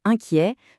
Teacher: souvenez-vous que le in est nasal et que le T à la fin, il est muet